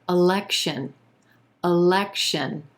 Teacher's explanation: three syllables here emphasis on the second syllable and that e is in red vowel sound election our first